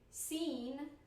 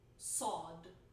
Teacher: I change the vowel after, like I make a more like open vowel for seen and then a more closed vowel for sod, and people think that I pronounce the consonant differently.